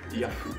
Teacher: On remarquera aussi l'absence de la syllabe hu, qui est remplacée par fu, ce qui fait que le site de recherche Yahoo est prononcé Yahoo.